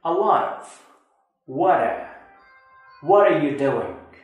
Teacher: while linking two words, if the second word begins with a vowel sound, the T at the end of the first word is pronounced as the flat T